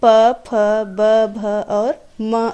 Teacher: प वर्ग का उच्चारण करते समय हमारे होठ आपस में मिलते हैं। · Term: ओष्ठ